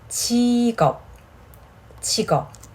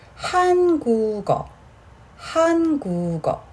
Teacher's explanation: When there is a final consonant in the preceding syllable, and there is no first consonant in the following syllable, the final consonant of the first syllable is carried over and pronounced as the initial sound of the second syllable